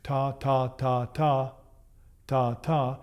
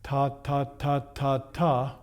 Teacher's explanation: which is a closed release where my tongue is actually ending the note